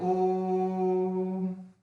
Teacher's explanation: ओ को देर तक खींचना है, इसलिए हमने इसको पुल्लिंग स्वर लगाया इसमें।